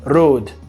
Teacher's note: E a gente percebe também que não há um ditongo